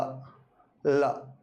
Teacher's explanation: जब हम इसका उच्चारण करते हैं ल जीभ तालु से चिपकती है ल और जैसे ही हम इसका उच्चारण करते हैं बोलते हैं तो तुरंत प्राणवायु जीभ के दोनों ओर से बाहर निकल जाएगी। यानी ल का उच्चारण जीभ के दोनों ओर से जब हम करेंगे तो ल के उच्चारण में जीव प्राणवायु हमारे जीभ के दोनों ओर से बाहर निकल जाएगी। · ल के उच्चारण में जीव प्राणवायु हमारे जीभ के दोनों ओर से बाहर निकल जाएगी। दोनों ओर से मतलब दोनों तरफ से इसलिए इसको पार्श्विक ध्वनि पारश्व यानी बगल से निकल जाती है।